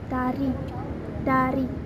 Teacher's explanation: r atau l tergantung pada posisinya untuk R itu dilavelkan sebagai bunyi Flap yaitu lidahnya hanya menyentuh gusi sebentar